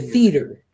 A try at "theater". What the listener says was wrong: No, theater. No, you're still saying 3 syllables. If we're gonna say it based on phonics, but in all reality, when you're